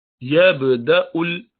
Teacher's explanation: यबदउल, बा पर कलकला होगा